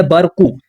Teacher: اس قاف کو پر پڑھیں گے، یعنی مستعلیہ حروف میں سے ہے، موٹا پڑھا جانے والا حرف ہے